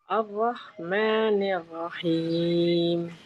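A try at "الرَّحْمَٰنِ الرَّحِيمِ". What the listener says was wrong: Ar-Rah. Tebalkan lagi ro-nya. Nir-Ra. Nir-Ra. Coba nir-Ra. Nir-Rahim.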